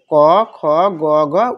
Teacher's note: গোড়া এবং উপরের তালুর নরম অংশের সংযোগের উচ্চারিত হয় এটা হলো ক বর্গীয় ক বর্গীয় প্রথম হলো ক এজন্য এটা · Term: কণ্ঠ বা জিহ্বামূলীয় বর্ণ